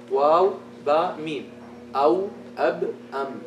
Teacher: These three letters only. With these three letters only, you use the lips.